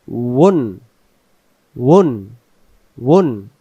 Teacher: তাহলে ওয়াও অক্ষরের মাখরাজ হলো ওয়াও অক্ষর দুই ঠোঁটের মাঝখানের ফাঁকা থেকে পড়তে হবে